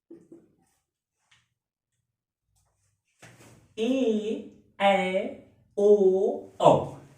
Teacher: अ और ई मिलके जो है ए, अ और ओ मिलके ओ, अ और ए मिलकर ऐ तथा अ और ओ मिलकर औ बनाते हैं। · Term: संयुक्त स्वर